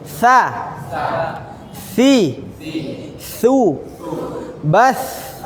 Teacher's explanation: Harus ada angin keluar, berhembus.